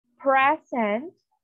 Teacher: the noun present okay the stress is on the first syllable